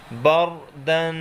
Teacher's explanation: با را زبر بر، را کے اوپر زبر ہے، اس کو پر پڑھیں گے۔ دال دو زبر دن، بردن۔